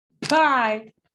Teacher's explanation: the burst of air for a voiceless sound is more noticeable. Like, pie, el papel se mueve más por, a ver si se ve.